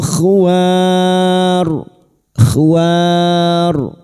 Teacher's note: bertemunya mad dengan huruf hidup yang dibaca waqaf mad arid al sukun empat harakat kita panjangkan